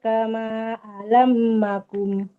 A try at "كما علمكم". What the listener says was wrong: Alamakum bukan alamakum. Yang ditasdidkan itu huruf lam, bukan mim.